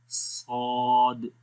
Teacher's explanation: صاد کیونکہ موٹا ہے حرف، اس کے اندر استعلا کی کوالٹی ہے جو کہ اس کو موٹا کرتی ہے · زبان کی جڑ یا بیک سائڈ بھی اوپر کی طرف جا رہی ہے